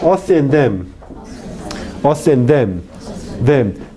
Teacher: Usted podrá oír la fricción del aire, ¿no? No hay un cierre total, sino hay solo un cierre parcial.